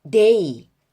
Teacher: 원래는 에 소리와 이 소리가 있는데 A가 하나의 소리가 됐잖아요. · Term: 이중모음